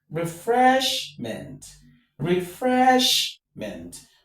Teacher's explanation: So, fresh is what is stressed. · The root word is fresh, and so fresh takes the stress.